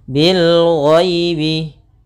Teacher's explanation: ada ya sukun yang didahului dengan fathah, maka kita namakan dengan bacaan lin, lembut dalam pelafalannya